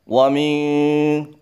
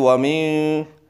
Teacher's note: Yang perlu diperhatikan yang pertama adalah bacaan nun sukun ketemu shin. Ikhfa, hukumnya ikhfa yang harus samar tetapi menjorok masuk ke dalam huruf shin.